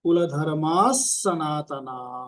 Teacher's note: उसके बाद में सनातना उसके पीछे भी विसर्ग है। तो पहला जो विसर्ग है कुल धर्मा और स तो उसमें पहले वाले विसर्ग को आधे सा का उच्चारण करना है।